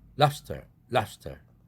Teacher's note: 이렇게 브가 푸 사운드로 진동 없이 발음된다. 스의 영향을 받아서 무성음화되었다.